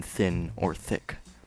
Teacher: The letter thorn's pronunciation is the voiceless dental fricative, th, as in thin or thick.